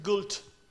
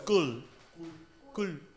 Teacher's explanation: There are no final consonants. None at all.